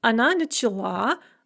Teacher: the stress shifts onto the ending in the feminine singular